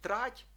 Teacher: маємо пом'якшений ті теж у слові трать